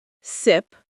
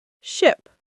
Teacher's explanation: S teeth close together. Sound is sharp. Sh. Lips rounded forward. Sound is softer and longer.